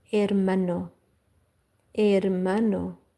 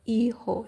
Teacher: You do not pronounce H in Spanish. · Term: H is silent